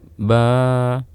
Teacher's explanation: Namun suara panjang setelahnya itu adalah suara alif, ba. Nah, kalau ba berasal dari 2 bibir, namun suara panjang setelahnya bukan berasal dari 2 bibir. Artinya titik keluarnya suara bukan berasal dari 2 bibir, namun dari al-jauf, rongga mulut dan rongga tenggorokan. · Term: suara huruf mad